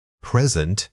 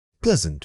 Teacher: Noun, stress on the first syllable, verb, stress on the second.